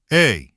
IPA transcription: e